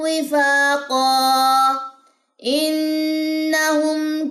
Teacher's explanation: تنوین کے بعد حمزہ، اب یہاں پہ آپ نے غنہ نہیں کرنا